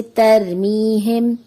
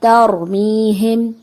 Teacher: را کو ادائیگی میں پر پڑھنا چاہیے کیونکہ را سے پہلے زبر ہے